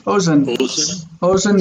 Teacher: So the accent is on the first syllable.